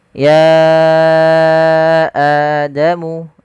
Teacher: antara mad badal dengan mad wajib atau mad jaiz munfasil. Panjangnya untuk mad badal sendiri cukup dua harakat sebagaimana mad thabi'i.